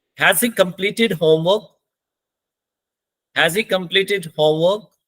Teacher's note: तो इसमें हमारा जो मेन वर्ब है कंप्लीट, उस पे स्ट्रेस लगेगी, और जो होमवर्क है उसमें क्या लगेगी, राइजिंग टोन लगेगी